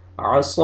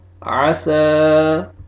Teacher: اس کے پروننسیشن میں آپ نے فرق رکھنا ہے کہ اس کو کیسے پروننس کرنا ہے، صاد کو اور سین کو۔ صاد کو موٹا کر کے پڑھنا ہے آپ نے، اور سین کو آپ نے موٹا نہیں کرنا۔